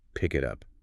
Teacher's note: When you have a phrase like pick it up, inserting glottal stops creates pick it up. The vocal cords close and open 3 times. Which feels super jerky. Very. But by linking the consonant to the vowel, you bypass the glottal stops entirely.